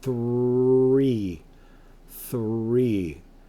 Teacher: the th makes a f